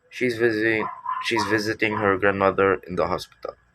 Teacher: the stressed words are visiting grandmother and Hospital